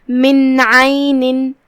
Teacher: یہاں بھی حکم ہے اظہار، تو ہم یہ نون کو ظاہر کریں گے اور بغیر غنہ کے حکم کو ادا کریں گے · کلمت عین میں یہاں حرف العین ہے، ہم عین کو حلق کے درمیان والے حصے سے ادا کریں گے